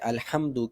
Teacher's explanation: الحمد کی ہا جو ہے اس کا تعلق وسط حلق کے ساتھ ہے، اور وسط حلق ہا کا مخرج ہے